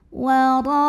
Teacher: karena ada alif didahului baris fathah, maka cara membacanya panjang ra-nya 2 harokat. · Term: matobi'i